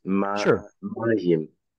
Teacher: the stress should be on the first syllable